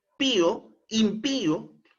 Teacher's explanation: lleva la mayor entonación de voz en la última sílaba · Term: palabra aguda